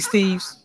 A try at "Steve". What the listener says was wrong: My last name is Steve. Not Steve's. It's Steve. Let's be respectful of each other, please. That's how you properly pronounce my name.